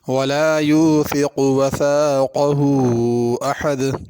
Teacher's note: یوثق میں، وثاقہ میں سا ہے، اس کو سا ہی پڑھنا، سین نہیں پڑھنا